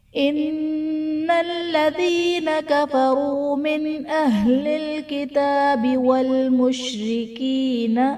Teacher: नून साकिन के बाद हुरूफ हलक़ी में से हमजा है तो यहाँ पर इजहार का कायदा होगा, यानी नून साकिन में हम गुन्ना नहीं करेंगे